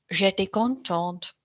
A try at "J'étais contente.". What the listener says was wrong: Your learning goal for me is smaller mouth. J'étais contente and more singing.